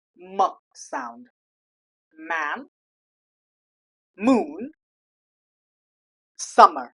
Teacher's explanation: To pronounce these sounds, first of all, air flows through the nose instead of the mouth.